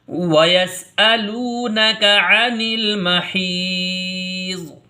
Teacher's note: وَيَسْأَلُونَكَ عَنِ الْمَحِيضِ، یہاں یا مدہ ہے۔ یا مدہ کو بھی ایک الف کے برابر کھینچ کے پڑھیں گے · واو مدہ کہتے ہیں کہ واو ساکن سے پہلے حرف کے اوپر پیش ہو تو اس کو واو مدہ کہتے ہیں۔ واو مدہ کو ایک الف کے برابر کھینچ کر کے پڑھتے ہیں، یعنی جتنا کھڑا زبر کھینچ کے پڑھا جاتا ہے اتنا ہی لام واو پیش لو یعنی واو مدہ کو ہم کھینچ کے پڑھیں گے۔